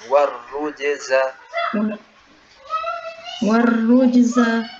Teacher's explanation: Warru, jim sakinah muqalqalah, jim sakinah muqalqalah, warruj, warruj, za, warrujza, warrujza, jimnya jangan dialirkan tapi cukup dipantulkan biasa